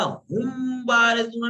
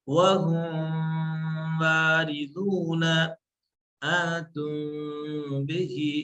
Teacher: سا میم کو پورا ہم بارزون نہ کہا، ہم بارزون، بلکہ تھوڑا سا میم کو ہلکا سا گھومنا ہے، ہونٹ کس کے نہ ملنے میں، بہت ہلکے سے یا تھوڑی جگہ سے رہے ، یا ملے بھی تو بس صرف آواز میم کی نکلنے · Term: اخفا